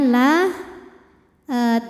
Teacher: Jadi bunyinya la tanpa harus mengangkat pangkal lidah. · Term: tarqiq